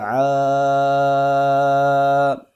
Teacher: عین حروف حلقی میں سے ہے، اس کو وسط حلق یعنی کہ حلق کے درمیانی حصے سے ادا کریں گے۔